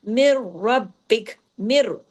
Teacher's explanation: نون ساکن کے بعد را آ گیا نا، تو یہاں پہ ادغام، ادغام ہو رہا ہے لیکن ادغام تام بلا غنہ